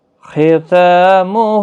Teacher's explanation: خا پور پڑا جائے گا، حروف مستعلیہ کا حرف ہے ، تا اور ہا دونوں کے اوپر کھڑی حرکات ہے، ایک · ملانے کی صورت میں تنوین کے بعد یرملون کا واو ادغام مع الغنہ ہوگا